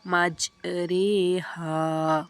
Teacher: را ممالہ زیر اور یا کی طرف مائل ہونے کی وجہ سے باریک پڑھی جاتی ہے